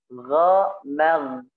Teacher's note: kita tidak keluarkan nafasnya, tapi suaranya kita alirkan. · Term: rikhawah